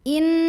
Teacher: dengung pada nun bunyinya n, tapi suaranya bergetar masuk ke hidung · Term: gunnah musyaddadah